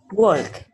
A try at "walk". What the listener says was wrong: Now, when you pronounce it, don't pronounce the L.